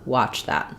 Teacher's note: I'm kind of going right from my CH sound to my voice TH sound